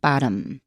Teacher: 但 是 T 跟 M 这 个 发 音 位 置 是 不 一 样 的 哈， 所 以 这 个 时 候 就 会 变 成 tap 那 个 声 音。